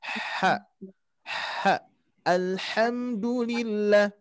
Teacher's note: huruf H ini yang pertama yang kita sebut hak kecil ini mengeluarkan hembusan nafas